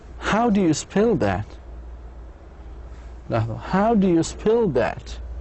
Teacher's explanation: You should go up. You should raise your voice.